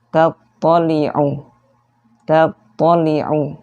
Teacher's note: ketika tasydid sifat mantulnya hilang